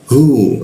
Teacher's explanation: masuk ke hu di tenggorokan bagian bawah, hu, nah, seperti itu ya, tebal ya.